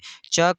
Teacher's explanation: तो च का उच्चारण स्थान तालु है।